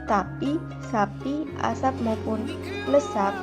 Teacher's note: sedangkan P berada di tengah maupun di belakang pada kata tapi, sapi, asap maupun lesap tidak diucapkan secara meletup atau implosif